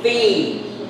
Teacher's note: There should be three syllables. First, long E.